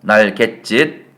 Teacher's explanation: 발음을 할 때 없던 지읒 하나가 들어가죠. 날갯짓. 자, 그런데 최종 발음은 이 지읒 때문에 이렇게 날갯짓 된소리가 됐죠. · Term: 사이소리